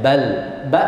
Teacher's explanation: jaher jahat itu tidak keluar hembusan nafas jadi ditahan